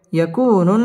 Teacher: নুনের মধ্যে তাসদিদ আসছে নুন ওয়াজিব গুন্নাহ করে পড়তে হবে